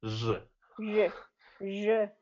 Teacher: It is like J, but I think the tongue is much higher